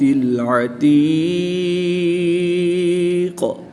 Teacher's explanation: وقف کی حالت میں قاف کی زیر کو ساکن کر دیں گے تو یہاں پر قلقلہ صغریٰ ہوگا